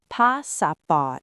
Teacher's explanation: Notice how the ending sounds are very soft. The Thai language doesn't like strong consonants at the end of words.